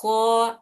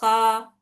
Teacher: جڑ کو ہلکا سا اٹھائے تالو کی طرف تو خو، ایسی آواز آتی ہے. اگر جڑ کو نہیں اٹھائے، خا، ایسی آتی ہے. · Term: موٹا